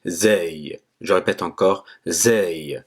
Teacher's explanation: c'est comme le Z en français. Il n'est pas très élevé, n'est pas emphatique. En fait, c'est un Z simple.